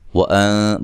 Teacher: نون ساکن کا یہاں اخفا مع الغنہ ہے, ٹھیک ہے. وَأَن باریک اخفا کرنا ہے.